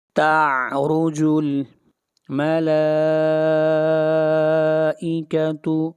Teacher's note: مد متصل، اس مد کو 3 الف کے برابر کھینچ کر پڑھیں گے